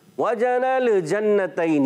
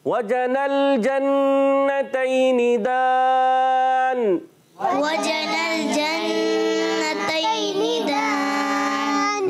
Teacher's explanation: नून को लाम से मिलाएंगे, लाम को हिलाना नहीं। बाज़ बच्चे बड़े हिला देते हैं।